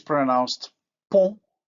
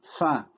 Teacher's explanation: we can see how the vowel is nasalized because it is in word final position. In other words, followed by nasal.